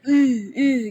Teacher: keluarnya dari Dada ya itu tidak boleh itu keluarnya dari dada sedangkan makhraj huruf ha itu adalah dari tenggorokan jadi Keluarnya tipis